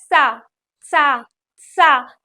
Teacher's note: अब इस सा को बोलेंगे तो बहुत अच्छे से आराम से बोलेंगे, दांतों के इधर उधर से आवाज निकलेगी। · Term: दंत वाली सा